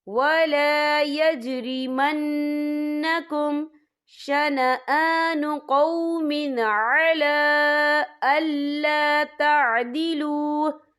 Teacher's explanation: عَلَىٰ لام کے اوپر کھڑی حرکات ہے اور اس میں چھوٹی سی مد بھی ہے، تو ہم یہاں 3 یا 4 حرکت کے برابر کھینچ کے پڑھیں گے۔ اور آگے دیکھیں أَلَّا تَعْدِلُوا، آگے دیکھیں آپ کو چھوٹی سی توئیں لکھی نظر آ رہی ہے، تو یہ حروف مطلق کی علامت ہے، تو یہاں پہ ٹھہرنا بہتر ہے۔ · نون مشدد ہے تو یہاں پر غنہ ہوگا